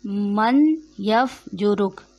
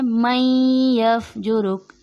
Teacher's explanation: मैं यफ्जुरुक, यहाँ पे मीम के बाद नून है, अक्सर पढ़ने में ये गलती होती है, इसको पढ़ दिया जाता है मन यफ्जुरुक, नून लिखा जाएगा लेकिन पढ़ा नहीं जाएगा। मैं यफ्जुरुक, मीम को या से मिलाएंगे, दुरुस्त अदायगी है मैं यफ्जुरुक।